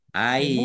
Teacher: Ya-nya dibaca double, dibaca ai dulu.